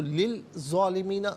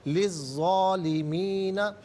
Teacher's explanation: लाम के नीचे ज़ेर से अज़्ज़ालिमीना के ज़ा के साथ मिलाएंगे, दरमियान में से अलिफ यानी हमज़ा को हज़फ करेंगे। ज़ा हरफ शमसिया है, हरफ शमसिया वो हर्फ के जिस पर अलिफ लाम हो लेकिन लाम को पढ़ा ना जाए, तो लिल ज़ालिमीना गलत, लिज़्ज़ालिमीना।